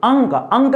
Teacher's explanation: अंक में खाली नाक से हवा निकलती है